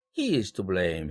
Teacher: 여기에서 마지막 내용은 blame이지만 여기서 he를 강조하기 위해서 그 사람이 비난받아야 돼, 이렇게 하기 위해서 he에 비록 인칭대명사로서 기능어지만 일강세를 배당한 것입니다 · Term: 강조 강세